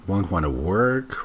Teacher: I would have gone with a rising intonation. Won't want to work, rising intonation.